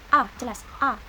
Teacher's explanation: vokal yang timbul karena lidah bagian tengah digunakan. Letaknya di tengah, mulut tidak bundar, dan majhur atau jelas. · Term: fathah pendek